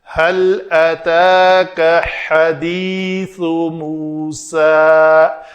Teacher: حدیث سا جو ہے یہ زبان دونوں دانتوں کے درمیان نظر آ رہی ہے تو یہ سا ہے